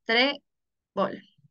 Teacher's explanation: La mayor fuerza de voz se encuentra en la penúltima sílaba